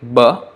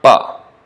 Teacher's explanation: Pa is unvoiced, aghosha. B is from the deeper part of the throat, so it's voiced